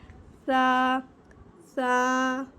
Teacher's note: जुबान की नोक जब हमारे सना औलिया के किनारे से लगेगी तो सा अदा होगा